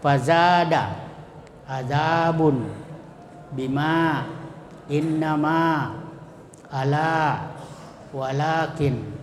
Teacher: Kemudian yang ketiga mad tabi'i, huruf yang berharakat fathah sesudahnya terdapat huruf alif, ya, seperti fazada, adzabun, bima, innama, ala, walakin, ya. Jadi semua itu cara membacanya dipanjangkan satu alif atau dua harakat.